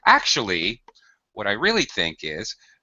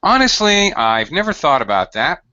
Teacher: I raise my pitch to to kind of make it known to The Listener that I'm changing or introducing an idea